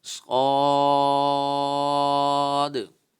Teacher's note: स्वाद पर मद लाजिम हो रही है, तो हम इसे 3 अलिफ के बराबर खींच कर पढ़ेंगे।